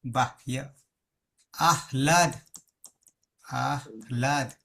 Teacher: લખું બાહ ય ય આયો અંતસ્થ છે અંતસ્થ છે તો ત્યાં હ શુદ્ધ નહી રહે ઉરસ થઈ જશે ઉરહ છાતી થઈ જશે